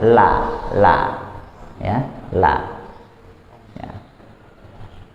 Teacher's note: Jadi lidahnya la dia kena gusi atas, gusi di atas gigi seri ya, gusinya bukan langit-langitnya, la, tapi dia kena gusi gigi seri atas, la ya, la ya. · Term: huruf lam